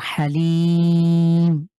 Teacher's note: এখানে সিম্বল আছে, এই কারণে লি কে ৩ আলিফ টেনে পড়ব